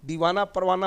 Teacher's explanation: यहाँ हम दीवाना परवाना बोल रहे हैं लेकिन दीवाना परवाना में हा की आवाज़ नहीं आ रही है बल्कि अलिफ की आवाज़ आ जा रही है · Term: हाय मुख्तफ़ी